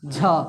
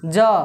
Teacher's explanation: वैसे ही ज, झ, तो किस झ में ज़्यादा वायु, ज में कम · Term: अल्पप्राण